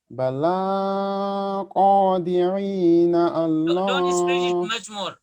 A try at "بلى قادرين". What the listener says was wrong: Don't stretch it much more. Don't stretch it a lot. بلى, just one alif.